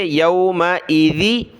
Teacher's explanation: یہ ذال ہے، ذال پر زبان نکالتے ہوئے اس کو پڑھیں گے